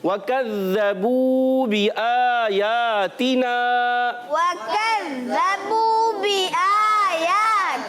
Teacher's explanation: तो आपने खींचना है, एक अलिफ वाव मद्दा है। · वाव पर ज़बर है, वाव की अदायगी होंठों की गोलाई से और एक तशदीद भी नजर आ रही है।